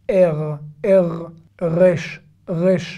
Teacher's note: C'est un R comme un R français, mais un petit peu légèrement dans la gorge, légèrement. En arrière, par rapport au français qui est très... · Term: le resh israélien